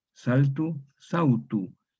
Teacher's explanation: Entonces se forma, aquí tenemos una L agrupada, se vocaliza en vau. Saltu, sautu. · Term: vocalización